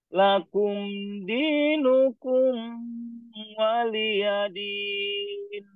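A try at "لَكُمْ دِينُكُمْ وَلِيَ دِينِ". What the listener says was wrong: Ini kumnya jangan ditahan. Langsung saja.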